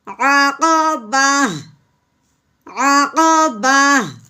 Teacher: وقف کی صورت میں تا نہیں پڑھا جاتا بلکہ ہا کی آواز نکالتے ہیں ساکن کرتے ہوئے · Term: گول تا